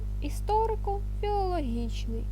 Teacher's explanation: складні слова що пишуться через дефіс мають лише основні наголоси історико-філологічний мають наголос в слові історико на о та філологічни на і